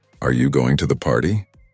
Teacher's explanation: Rising intonation this is when your voice Rises at the end of a sentence it's used in questions